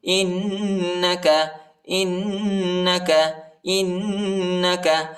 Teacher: حمزہ کو نون کے ساتھ ملائیں گے اور غنہ کریں گے